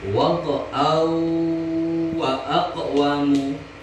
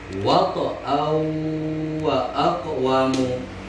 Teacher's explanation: dengan dengung ya, agak lama sekitar lebih kurang 2 harkat ya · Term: idgham bi gunnah